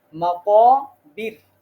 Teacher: আপনারা অনেকেই মাকাবির আচ্ছা এইখানে র টা বারিক হবে মানে হচ্ছে র টা বলার সময় এখানে আর মুখটা গোল করা যাবে না